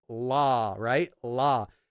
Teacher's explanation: L in English is, you can see the bottom of the tongue sticking out from below the top teeth when you say la, right?